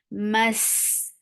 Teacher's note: give Rakhawa and Safir on C. So the sound will not stop. Mas tu for the circular lips.